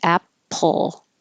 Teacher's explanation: the L position first and then making the P Apple so when you open your lips for the P your tongue is already making the L Sound and hold the l sound for a little longer than you